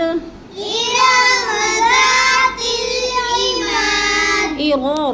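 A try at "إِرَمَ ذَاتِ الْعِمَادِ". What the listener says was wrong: रा को लंबा नहीं करना, रा के ऊपर ज़बर है। इरम ज़ातिल इमाद।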